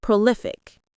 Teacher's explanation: It has three syllables: pro, liic, prolific. The stress is on the middle syllable, li, so it's prolific.